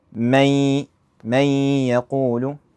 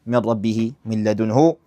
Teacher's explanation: You do the ghunnah, which is the nasal sound. For miqdar harakatayn, right? You hold for like two vowels.